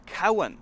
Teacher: So I'm changing the V to a W sound.